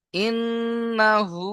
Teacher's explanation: নুনের উপরে তাসদীদ, গুণনা করা ওয়াজিব, হা উল্টা পেশ হু, এক আলিফ টান হবে।